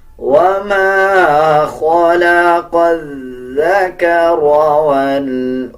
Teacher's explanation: زبان کی نوک دونوں دانتوں کے درمیان لے کے آئیں گے تب ذال صحیح ادا کیا جائے گا